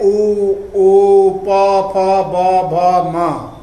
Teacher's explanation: कुछ वर्ण दांत के स्पर्श से बोले जाते हैं, जैसे ल, स, त, थ, द, ध, न, ये दंत वर्ण कहलाते हैं। ओष्ठ, जिन वर्णों के उच्चारण में जीभ के सहयोग से ओष्ठ परस्पर मिलकर कार्य करते हैं उन्हें ओष्ठ वर्ण कहते हैं।